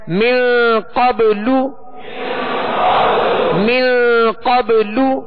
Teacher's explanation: قاف کو پر پڑھیں گے حروف مستعلیہ میں سے ہے اور من پہ غنہ کریں گے اخفاء کا غنہ ہے